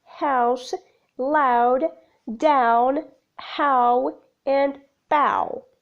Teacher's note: a slight lip rounding in the articulation of this diphthong characteristics the glide begins in a position quite similar to long ah moving up towards o the lips start neutral with the movement too loosely around it · there's a slight lip rounding in the articulation of this diphthong